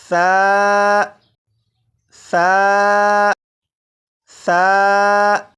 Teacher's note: सा को मैंने नरमी से पढ़ा, यानी सीटी की आवाज़ के बगैर पढ़ा। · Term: नरमी से पढ़ना